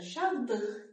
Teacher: L samiti tələffüzdə D samitinə keçməlidir.